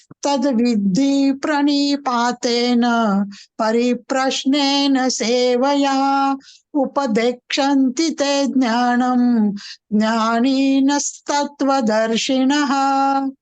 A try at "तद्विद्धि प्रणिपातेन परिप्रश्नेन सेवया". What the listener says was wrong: तद्विद्धि, not तद, तत्.